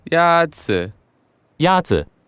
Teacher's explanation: the first tone is a high level tone